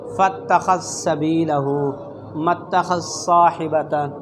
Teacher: ذال کے ادغام صاد میں اور ذال کے ادغام سین میں